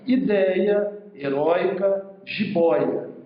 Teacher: elas apresentam um ditongo de som aberto na paroxítona